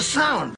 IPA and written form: saʊnd (SOUND)